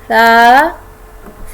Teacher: ज़बान की नोक सामने ऊपर के दो दांतों की एज से लगे, तो वहाँ से सा अदा होता है।